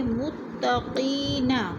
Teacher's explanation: قی کو تھوڑا سا کھینچنا ہے، یا مدہ ہے 2 حرکات کے برابر